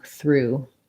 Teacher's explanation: voiceless TH plus R tense oo, through. That might be a way to rewrite it.